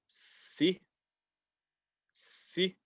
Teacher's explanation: the mahraj is the tip of the tongue touching the bottom two teeth